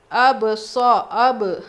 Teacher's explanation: جب ان پہ جزم ہو تو ان کو پڑھتے وقت آپس میں مخرج ٹکر کھا کر الگ ہو جاتے ہیں، باؤنس ہوتی ہے آواز. اب اب حمزہ با زبر اب ایسے آئے گی، اتنا دبا کے بھی نہیں پڑھیں گے. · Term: قلقلہ